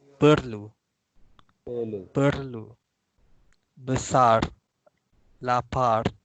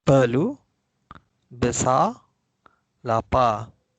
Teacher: in spoken Malay, we make it silent. We don't pronounce the R.